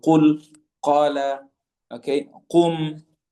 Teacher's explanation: from via the aqsa al-lisan, the very back of the tongue, touching the soft palate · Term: letter qaf